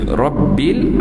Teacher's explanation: Bagi atas dia kena tebal dan dia ada sifat takrir dia, bergetarannya. Rabbil, okey, sini saya rasa tak ada nampak masalah bagi kita orang Melayu.